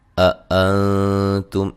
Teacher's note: أأنتم، یہ دونوں حمزہ جو حمزے ہیں ان کو تحقیق کے ساتھ پڑھنا ہے، یعنی کہ واضح پڑھنا ہے، نرم نہیں پڑھنا۔ اور نون ساکن کا یہاں اخفا ہے باریک، تم تا کو باریک پڑھیں گے، یہاں میم ساکن کا اظہار ہوگا، غنہ نہیں کریں گے